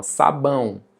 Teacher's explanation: quando você fala o ão tapando o nariz, você sente o nariz vibrando. Então nós temos um ditongo nasal.